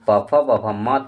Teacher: और ओष्ठ से हो जाएगा बच्चों, ओष्ठ की अगर बात करेंगे ओष्ठ, तो जो प फ ब भ म तक है यह ओष्ठ से उच्चारण इसका हो जाएगा